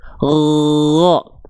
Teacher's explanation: kalau huruf gin dia enggak keluar nafas g cuman keluar suara ngalir